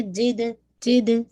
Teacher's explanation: یجد make sure جیم کے اندر ایئر نہیں نکلنی چاہیے